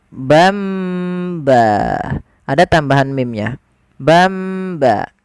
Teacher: yaitu kita apa namanya menukar suara nunnya menjadi suara Nun Maf suara mim sambil ditahan suara mimnya sepanjang dua harakat · Un bertemu setelahnya satu huruf saja yaitu huruf ba Maka nanti suara nunnya dirubah atau suara Tan dirubah menjadi mim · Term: iqlab